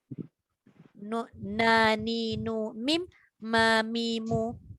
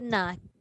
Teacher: bila sebut nun dengan mim ni ada sifat dengung atau gunnah, dalam apa-apa keadaan sekalipun, walaupun nun tu mati, yang izhar, kalau ikhfa dengan idgham kita tahulah nun dengan mim tu dia panjang. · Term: sifat gunnah